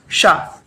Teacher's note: ये है मूर्धा सा, यानी कि जो कटोरी बनी हुई है मुंह पे, वहां पे जीभ स्पर्श करेंगे। जैसे टा बोलते हैं, जीभ को घुमा के, ऐसे ही जीभ को मोड़े, ऊपर स्पर्श करें और बोले शा